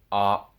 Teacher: Instead, you want to cut off the sound at the end. So for the op sound, the sound cuts off with my lips coming together.